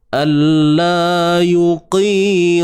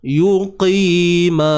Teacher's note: Alla yuqi, huruf qaf tebal baris bawah.